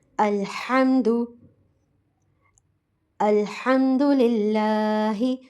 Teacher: الحمد الحمد، حلق سے ادا ہوتا ہے، درمیانی حلق سے. اسے حلق سے ہی پریشر کے ساتھ ہم ادا کریں گے.